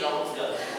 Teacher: British would just say longer. No R sound there.